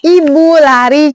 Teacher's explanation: vokal I ini dia posisi lidahnya itu lihat tinggi atas, menggunakan bagian lidah depan, posisi mulutnya itu tertutup.